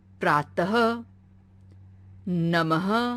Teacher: यह चिन्ह अक्षर के बाद लगाया जाता है। इसे बोलते समय ह जैसी आवाज आती है, जैसे प्रातः, नमः। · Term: विसर्ग